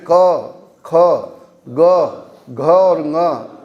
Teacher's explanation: क वर्ग का उच्चारण कहाँ से हो रहा है, कंठ से हो रहा है